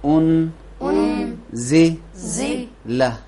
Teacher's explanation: نون زے کے نزدیک اخفا ہوتا ہے، اخفا کا قانون